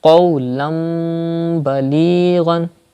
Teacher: Don't read as qawlan balighan, but change tanween with mim like qawlan balighan. And when you say qawlan, then take the sound into the nose and keep the sound into the nose up to one alif, like that. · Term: iqlab